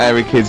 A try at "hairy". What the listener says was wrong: Sorry, I noticed both of you there dropped the H, or the H, or however it's pronounced. airy, hairy, hairy children, not sort of airy, kind of light-headed or...